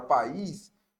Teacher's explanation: a palavra país ela vai passar a ser um hiato